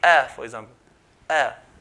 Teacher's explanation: If you can't hear it, then we're doing it properly. So if I say a, for example, a, no nasalization.